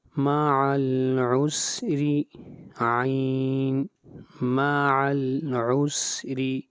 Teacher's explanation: را کو باریک پڑھیں گے، را کے نیچے زیر